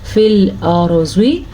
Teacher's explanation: زواد کو پر پڑھیں گے، زواد ہمیشہ ہی پر پڑھا جاتا ہے